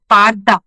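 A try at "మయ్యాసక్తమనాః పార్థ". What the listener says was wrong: పార్థ పార్థ కాదు పార్థ, తావొత్తు. పార్థ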